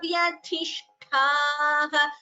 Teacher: tha and tha both have to be Mahaprana